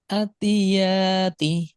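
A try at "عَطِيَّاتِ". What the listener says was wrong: আবার টান হয় নাই জায়গা। আতিয়াতি।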